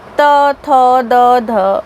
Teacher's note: दांत की सहायता से उच्चारित ध्वनियाँ दंते हैं। इनमें जीवाग्र या जीभ की नोक की सहायता ली जाती है। हिंदी में त, थ, द, ध दंते हैं।